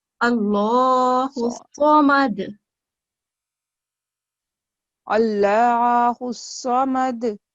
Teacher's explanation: اس میں تھک لیٹر ہے، صاد بھی اور لام الجلالہ بھی ہے. اس کو تھوڑا سا تھک کریں.